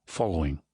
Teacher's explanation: the vowel is different certainly from American English, more in line with standard British English, aw, following.